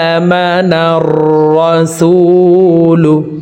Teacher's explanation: হামজার উপরে খাড়া জবর আছে, তাই এই হামজাকে এক আলিফ টেনে পড়ব। যদিও এখানে আলিফ হরফ আছে, আলিফকে হামজা বলে পড়তে হবে, কারণ আলিফে খাড়া জবর খারাজের উল্টা পেশ হইলে হরকত তানবিন ব্যবহার হইলে এই আলিফকে হামজা বলে উচ্চারণ করিয়া পড়িতে হয়।